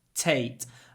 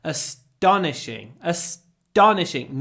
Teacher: no aspiration because it's after s